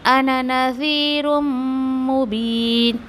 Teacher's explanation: मीम मुशद्दा पे भी गुन्ना करना है आपको